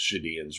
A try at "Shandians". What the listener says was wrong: The N is not silent.